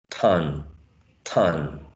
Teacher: and then the following one is uh the nasal right now as we have uh a nasal consonant sound here the previous sound becomes nasalized